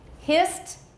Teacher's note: it's voiceless, we add a T sound, no extra syllable